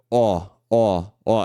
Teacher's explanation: mais assim o da direita vai ser um ó ó ó então a boca fica mais um pouquinho mais fechada mas mais arredondada